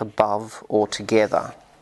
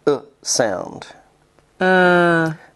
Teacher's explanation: backwards e the schwar is in a sense the nothing vow it is not high not low not front not back not rounded it just sits right in the middle of the mouth and it takes very little effort to make it just open